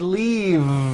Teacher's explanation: I should have said leave with a voiced V sound